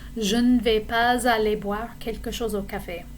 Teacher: when I say aller boire after je ne vais pas, I need to do a liaison